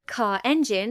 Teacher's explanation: So, car has no r sound. Car engine has an r linking the two words.